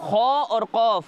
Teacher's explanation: خا اور قاف ایسے حروف ہیں جن کو ہر حالت میں پر یعنی موٹا پڑھتے ہیں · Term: حروف مستعلیہ